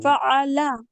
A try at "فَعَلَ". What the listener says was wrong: ఆ దగ్గర ఆగుతున్నారు కదా, అలా ఆగకుండా కంటిన్యూగా ఉండాలి. ఫాలా.